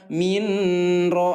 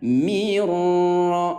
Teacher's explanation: idgham bila gunnah ya, yang dibaca dengan lebur atau tanpa didengungkan atau tanpa ditahan